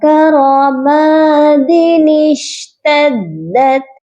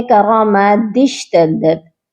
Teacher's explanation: ایسا نہیں پڑھا جائے گا، بلکہ نون کو ہم شین کے ساتھ ملا کر پڑھیں گے، درمیان میں یہ جو الف ہے یہ نہیں پڑھا جائے گا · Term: نون قطنی